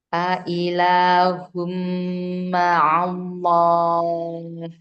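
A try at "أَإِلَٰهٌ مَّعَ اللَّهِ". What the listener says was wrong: Nah, jadi tidak ada kesempatan si bibir ketemu bibirnya karena lafzalahnya enggak pakai kedua bibir langsung tempel ke lam.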